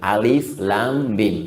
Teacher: Alif harful hawa, lam ke lisan, mim di bibir.